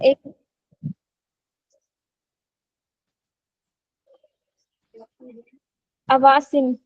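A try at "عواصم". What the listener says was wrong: आसिमा अवासिम, yes very good, आसिमा अवासिम।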